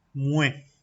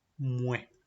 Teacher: Fíjense que se escribe muets, pero no pronuncio la TS, simplemente es mue. Esto porque la palabra acaba tanto como con T como con S. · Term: letra muda